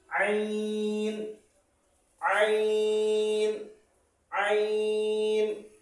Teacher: আইন, এটা আইনটা গলার ভিতর থেকে উচ্চারিত হবে।